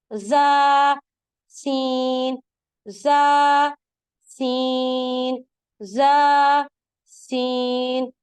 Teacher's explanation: से यहां पर आके इनसे जुबान की नोक टच हो जाएगी बारीक आवाज में इनको कहेंगे सीटी की आवाज के साथ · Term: सीटी वाले हुरूफ